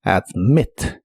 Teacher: Si te preguntas por qué ahora tiene una doble T, es porque este verbo en el presente tiene el acento en la última sílaba, admit. Y esta última sílaba consiste de una consonante, la M, una vocal, la I, y otra consonante, la T.